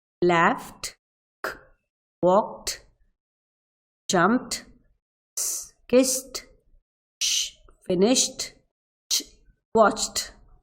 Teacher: Pronounce the ed ending as t after the voiceless consonant.